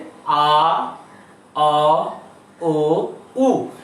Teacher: আর অ বলার সময় ঠোঁট আস্তে করে একটু সংকুচিত হচ্ছে, আ, অ, ও, উ। এই বর্ণগুলো আস্তে আস্তে আস্তে আস্তে উচ্চারণ হওয়ার সময় ওষ্ঠ সংকুচিত এবং গোলাকার হয়ে যাচ্ছে। তো সংকুচিত ও গোলাকার হওয়াকে বলা হচ্ছে সংবৃত উচ্চারণ।